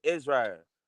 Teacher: So for example, if my mom says Israel, she'll say Israel, like she'll drop the L and make it into a strong R